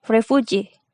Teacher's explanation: primary stress is on G and secondary stress is on ref. And primary stress remains on the stem.